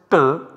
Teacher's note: The place of articulation for this is Murdhan, or the roof of the oral cavity. The Abhyantara Prayatna is Prashta, contact or touch of the tongue with the place of articulation.